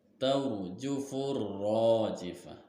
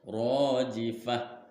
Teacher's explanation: Ya, itu huruf lamnya tidak tampak, dibacanya tidak jelas, maka masuk ke dalam huruf ra karena huruf ra-nya di atas ada tasdid. Huruf ra-nya dibaca tafhim. Tafhim itu alias tebal, sebab disukun atau disukunkan oleh fathah dan berharokat fathah juga.